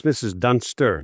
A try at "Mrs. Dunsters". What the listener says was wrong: No, it's Dunsters with an S.